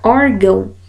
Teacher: eu tenho a marca de nasalidade que vai me dizer que esse a ele deve ser pronunciado com som nasal no órgão é esse som nasal mas a sílaba tônica é